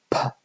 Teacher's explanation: p would be a kind of plosive, whereby you've closed the vocal tract at the lips, and then you suddenly release it, and the air flows out suddenly